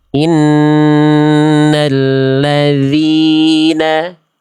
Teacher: harusnya zal, tipis. Pangkal lidahnya tidak perlu naik. Innalladzi, bukan wi.